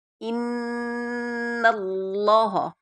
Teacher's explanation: ان پہ ہم نے غنہ کیا کیونکہ نون مشدد اور میم مشدد پر غنہ کرتے ہیں